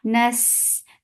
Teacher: Me, focus give e sound. Nas, give rakhawa on scene, and it is light and it has safir. Nas, but we are not giving stress on scene, but it has rakhawa.